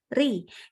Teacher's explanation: Ri dengan pangkal lidah turun. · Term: tipis